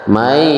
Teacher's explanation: Mai, nun sukun bertemu dengan ya, hukumnya adalah idgham bi gunnah. Dimasukkan nun sukunnya ke dalam huruf ya dengan mendengung.